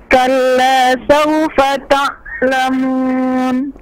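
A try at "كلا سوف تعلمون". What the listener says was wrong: Jangan tertahan, jangan ta'lamun. Jadi ditekan kayak orang nyelam, langsung bangkit lagi. Ta'lamun.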